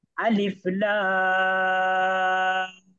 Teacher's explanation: লাম এর মধ্যেও চার আলিফ পরিমাণ মাদ আছে